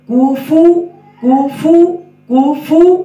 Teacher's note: کوفو کوفو کوفو، فو پڑھیں گے، اوپر دان نیچے والے ہونٹوں کے ساتھ لگیں گے اور ہونٹ گول بھی ہوں گے